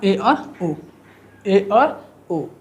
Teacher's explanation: ए और ओ बोलेंगे तो आधा मुंह क्या रहता है, हमारा बंद रहता है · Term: अर्धसंवृत